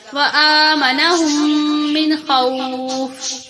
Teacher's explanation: نون پر یہاں پر غنہ نہیں کیا جائے گا